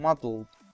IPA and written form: mʌdl̩d (muddled)